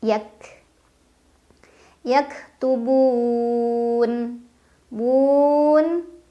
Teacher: karena ada Mad Thobi'i yang bertemu dengan huruf yang disukunkan dibaca panjang bisa dua empat atau enam harakat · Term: Mad aridli sukun